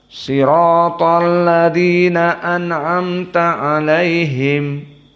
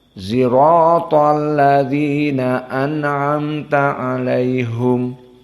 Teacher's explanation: permasalahan shad dibaca ismam. Jadi sirato menjadi zirato, dan asdaku menjadi azdaku.